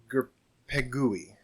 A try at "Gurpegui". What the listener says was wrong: No, there's an R in it. No, it's Gur. Pegua. Pegua. Make it a little Spanish accent.